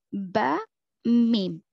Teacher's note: با اور میم بند ہونٹوں سے ادا ہوتے ہیں، با، میم، اور با گیلے حصے سے ادا ہوتا ہے، با گیلے حصے سے، میم سوکھے حصے سے، خشک حصے سے، میم۔